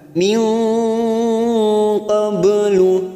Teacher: nun sukun bertemu qaf ikfa hakiki, kita samarkan bunyi nun sukun 3 harokat